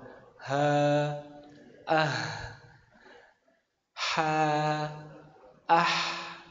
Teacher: Tenggorokan tengah. Jadi kalau ha besar ada di tenggorokan bawah.